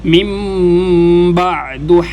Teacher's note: نون جازم کے بعد جب با آ جائے تو یہاں پر میم کو پڑھا جاتا ہے، تو یہاں پر نون نہیں پڑھا جائے گا، میم کو میم کے ساتھ ملایا جائے گا، جو چھوٹی سی میم پڑی ہوئی ہے۔